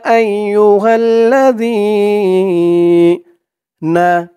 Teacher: লা হাল্লা আইয়ুহাল্লা এক আলিফ টান জের পরে ইয়া সাকিন আর এই জালের উচ্চারণটা একদম নরম পাতলা হবে জিহ্বার মাথা উপরে দাঁতের মাথার সাথে লাগবে